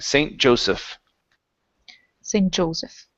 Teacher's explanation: instead of St. Joseph, it's Joseph. Stress at the beginning.